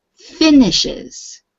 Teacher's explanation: the stress is on the um first syllable